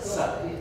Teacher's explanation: It's not palatal, it's dental.